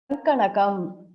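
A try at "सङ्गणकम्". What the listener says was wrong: Sanganaka, not Sanka. Ganaka.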